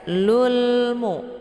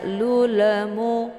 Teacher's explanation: cukup ditekan saja lulmu ya jadi bacaan lam ini tipis bukan dengan cara dipantul · jadi bacaan lam ini tipis, bukan dengan cara dipantul. Jangan dibaca lulemu, keluar bunyi le, itu bacaan yang salah.